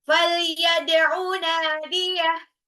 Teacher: Ya, dalnya itu qalqalah, pantul. Nadiyah, nunnya 2 harokat, matabi'i.